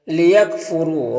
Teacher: لیکفروا، را کے اوپر پیش ہے تو را کو پر پڑھیں گے۔ یہاں پر واو ساکن سے پہلے را کے اوپر پیش ہے تو واو مدہ ہوگا، اسے ایک الف کے برابر کھینچ کر پڑھیں گے